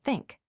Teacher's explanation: The first sound is the voiceless th pronounced like in the word think. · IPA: θ